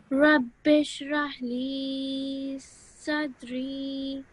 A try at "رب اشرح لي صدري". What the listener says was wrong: You're not supposed to prolong the li sound here. رب اشرح لي صدري. رب اشرح لي صدري.